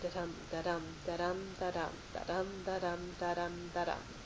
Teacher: Okay, unstressed, stressed, unstressed, stressed. That unstressed, stressed rhythm is what we call iambic.